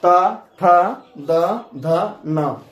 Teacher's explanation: इनको बोलने में जीभ दांत में सटता है। इसीलिए इसको हम लोग अह दंत वर्ण कहेंगे।